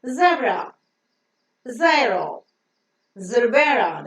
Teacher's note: The tip of the tongue goes very, very close to the teeth ridge, releasing the air between the gap that is present and have the vocal cords getting vibrated so that the voiced sound is pronounced with an audible friction.